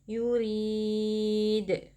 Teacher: karena huruf terakhir yang disukunkan adalah huruf dal atau yang diwaqafkan adalah huruf dal, maka berlaku hukum qalqalah kubra